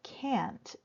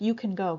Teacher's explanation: But where we don't reduce it is in the can't. You can really hear that ah, especially if you're in the Midwestern part of the United States. We really emphasize the a sound.